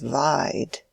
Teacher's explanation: pronunciation of the vowel seemed to stretch the word satirically.